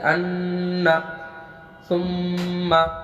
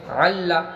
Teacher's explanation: نون اور میم پہ تشدید ہے تو ہم غنہ کر رہے ہیں، آواز کو ناک میں لے جا رہے ہیں